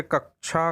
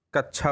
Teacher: बच्चे क्षा क्षत्री वाला जो होता है उसको छा उच्चारित करते हैं, जैसे कक्षा को कच्छा बोलना।